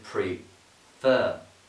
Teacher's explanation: Prefer has got the stress on the second bit, the second syllable, the final syllable.